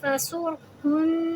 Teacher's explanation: نون پہ تشدید ہے تو ہم اس کو پورا 2 حرکے کا ٹائم دیں گے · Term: نون تشدید